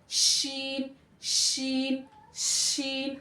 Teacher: जबान के बीच वाले हिस्से को तालू की तरफ हम क्या करेंगे, चिपकाएंगे। तो यहाँ पे हमारा हवा निकलती रहेगी, शीन शीन शीन, हल्का हवा का फ्लो आ रहा है।